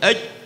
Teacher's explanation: makhrajnya huruf jim umpamanya aj ada di wasatul lisan